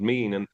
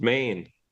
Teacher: if you go to certain parts of Ireland, some will pronounce it mean, and others will pronounce it main